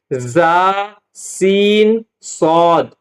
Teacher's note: ان 3 حروف کو ادا کرتے وقت سیٹی کی طرح تیز آواز نکلتی ہے، اس لیے ان حروف کو حروف صفیریہ یعنی سیٹی والے حروف کہتے ہیں۔